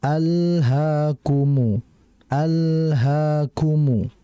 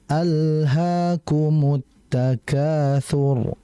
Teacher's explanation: Pada ayat yang pertama di situ perhatikan di alha di situ ada lam ee izhar alqamariyah yang bermakna bahwa al-nya itu al-nya lamnya itu dibaca jelas ya. Dan lam ini sendiri memiliki sifat tawasut. artinya mengalir akan tetapi tidak begitu lama.